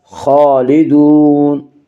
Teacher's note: خا کو پر پڑھیں گے، خا حروف مستعلیہ میں سے ہے